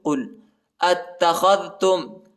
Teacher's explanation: إلا أياما معدودة قل اتخذتم قاف لام پیش قل اتخذتم اور حمزہ کو تا کے ساتھ ملائیں گے، تا کو شدت کے ساتھ سختی کے ساتھ پڑھیں گے